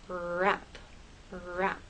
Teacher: But with rap, Your tongue never touches the bump. It never touches any part of the roof of your mouth. It comes close, but it doesn't touch.